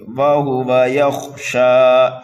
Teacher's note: وَهُوَ يَخْشَى، واو کو، ہا کو اور دوسرے واو کو جلدی پڑھنا ہے، یہ متحرک ہیں، یا کو خا میں ملائیں گے اور خا کو پر پڑھیں گے، یہ حروف مستعلیہ میں سے ہے، شین کے اوپر کھڑا زبر ہے اس لیے شین کو 1 الف کے برابر کھینچ کر کے پڑھیں گے۔ وَهُوَ يَخْشَى فَأَنْتَ عَنْهُ تَلَهَّى، نون ساکن کے بعد میں تا حروف اکفا میں سے آ رہا ہے تو یہاں پر بھی ہمیں اکفا کرنا ہے۔